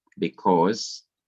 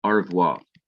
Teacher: The E is pronounced so fast that sometimes you cannot even hear it. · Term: simple Shiva